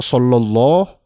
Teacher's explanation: kalau solowloh fathahnya berubah jadi tafkhim tebal